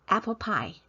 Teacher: in English, the P sound has less aspiration. 出气有更少的出气, but in Mandarin there is more aspiration.